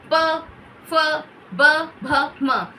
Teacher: इनका जो उच्चारण होता है हमारे ओष्ठ यानी कि होठों को छूने से होता है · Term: पवर्ग